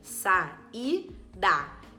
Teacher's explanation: o a sustenta uma sílaba e o i sustenta outra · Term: iato